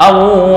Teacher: Tapi kalau awwab ini fleksibel, 2 boleh 4, boleh 6. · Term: mat aridi lis-sukun